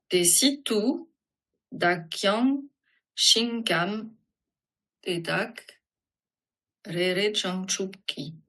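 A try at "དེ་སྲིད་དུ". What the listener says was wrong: Très bien, très bien.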